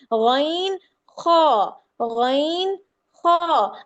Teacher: آواز حلق میں نہیں جا رہی جس طرح ہا اور عین کے وقت میں جا رہی تھی